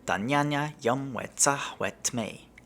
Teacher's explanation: the M at the end of dam might sound like an N or an eng, depending on what word follows